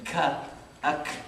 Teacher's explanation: So we said qaf is from the soft area, whereas when you say ka, ak, it's a little bit higher and it's from the hard palate.